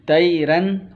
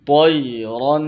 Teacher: طا اور را دونوں موٹا کریں گے